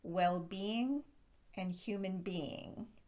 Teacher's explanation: in two word phrases where being is the second word native speakers tend to stress being instead of the first word